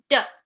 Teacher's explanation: For the letter D, it makes a D sound. This is a front, loud, short, voiced sound.